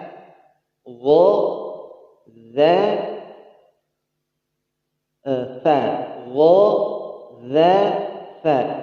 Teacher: Jadi ujung lidah ketemu ujung gigi seri atas